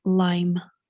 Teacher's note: We do have something sonorant here, and then we have two vowels that are not two vowels, but two vowel, something vowel-like in two parts. The second of these two parts is more front than the first one.